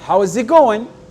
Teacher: Et il va avoir une petite on va dire petite intonation, accentuation sur le go. Donc on va avoir deux accentuations, ok? · Donc, ça va faire « how's it ». Et le « going », le « g » n'est pas prononcé à la fin. Et il va avoir une petite on va dire petite intonation, accentuation sur le go. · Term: accent tonique